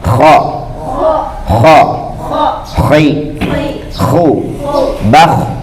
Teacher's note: Jadi yang bertindak menggetarkannya itu ada di tenggorokan atas. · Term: suara kha